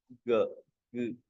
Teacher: Vocal folds are actually vibrating, but it is ga, no aspiration. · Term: voiced